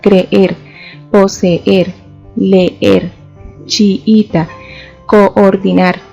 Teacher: encontramos dos vocales iguales que requieren doble pronunciación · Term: hiato